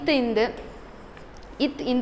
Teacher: இரு மெய்களும் மேல்வாய் பல்லின் அடியை நாக்கின் நுனி பொருந்துதல். நாக்கின் நுனி பொருந்துதல், பொருந்துறது.